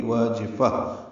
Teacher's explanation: خاشعہ، اس پہ وقف ضرور کرنا ہے، وقف لازم ہے. تائے مربوطہ ہاں میں تبدیل ہو جاتی ہے اور اس میں ہمس ہوتا ہے